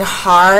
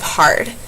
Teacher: deletion of the final consonant in words that have two consonants at the end. For example, saying har instead of hard.